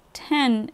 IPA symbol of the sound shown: ɛ